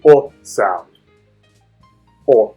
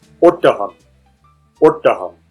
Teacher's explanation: It's a short sound. This is a sound you can't really find in English. It sounds a bit like the O in thought or court, but it's shorter